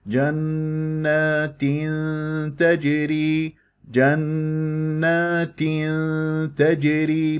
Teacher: تنوين وكسر جاء بعدها تاء تجري اخفاء ولكن اتم الكسر جيدا ثم ادخل في الاخفاء · الجيم مقلقله قلقله الصغرى في كلمه تجري